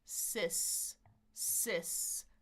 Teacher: So my tongue is up on the bump, goes down, back up for the sis. · My tongue just needs to move forward, but I'm just keeping my lips relaxed. My tongue is in the front. My jaw is a little bit more open than the long I. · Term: short I